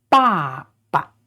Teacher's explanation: there's no tone on it, so that means it is pronounced very short and very soft